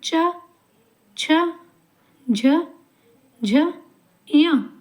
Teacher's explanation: हमारे तालु से वायु का दबाव होकर ये अक्षर बाहर निकलते हैं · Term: च वर्ग